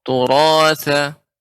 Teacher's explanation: ra-nya kurang tebal sedikit